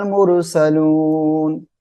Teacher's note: র মোটা করে পড়তে হবে